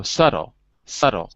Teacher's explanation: we read the t but we don't read the b